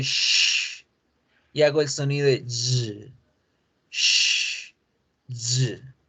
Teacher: Ese sonido se genera acá. La punta de la lengua alcanza a tocar los alveolos, pero la parte más de atrás de la lengua toca el paladar.